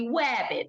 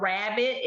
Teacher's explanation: We have kids who may say, instead of rabbit, it may be wabbit. They're using that W instead of that R sound.